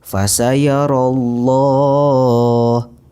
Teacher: Lafadz Allah yang dibaca dengan tebal dan dipanjangkan 2 harokat. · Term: tafkhim